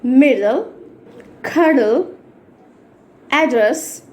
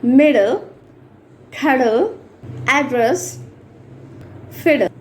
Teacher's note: ఇలా ఉంటాయి డి డి అలాంటప్పుడు we should not make any stress we have to pronounce only single డి ఒక డి ని వదిలేయండి అలాగే ఎల్ లో కూడా ఈ రూల్ ఫాలో